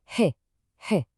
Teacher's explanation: It's a really short, sharp, breathy sigh right from the throat.